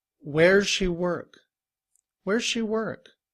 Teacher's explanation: does in IPA uses that upside down V which sounds like uh like in cup and we have du and z does does in reduced form we do not say where does she work instead we might just pronounce the Z